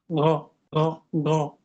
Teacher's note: এখানটা হালকা খরখরা থাকবে, বাংলার গয়ের মতো না, ঘ ঘ ঘ। যদি জিজ্ঞেস করি কোথা হতে, উত্তর হবে কণ্ঠনালীর শেষ হতে।